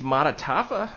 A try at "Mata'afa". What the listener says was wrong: I think it's Mataafa. Yeah, there's an extra T in there.